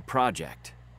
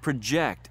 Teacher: we stress the first syllable because it's a noun